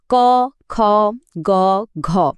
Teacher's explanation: খেয়াল করলে বোঝা যাবে শব্দটা ঠিক জিহ্বার গোড়া থেকে একদম গলার কাছাকাছি নরম তালুতে লেগে তৈরি হচ্ছে। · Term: কন্ঠধ্বনি, কণ্ঠধ্বনি